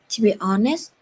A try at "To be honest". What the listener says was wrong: S and T, not just S. To be honest.